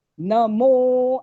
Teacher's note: न ऱ्हस्व आहे त्यामुळे एक मात्रा एक चुटकी लागतो तेवढा वेळ, आणि मोला बरोबर दुप्पट वेळ लागला पाहिजे.